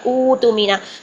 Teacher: تو پہلے حمزہ پر ضمہ ہے، ضمہ کو تھوڑا سا لمبا کر لیں 2 کاؤنٹس، تو یہ واو مدہ میں چینج ہو گیا